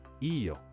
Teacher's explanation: answers using yo with a rising pitch.